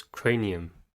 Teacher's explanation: has three syllables and stresses the first one first syllable is cray the first sound of er a the